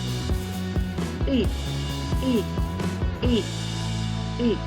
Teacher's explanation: и наш ротик розкритий нешироко він схожий на ось такий полукруг а язик при цьому відтягнутий в глибину рота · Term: звук и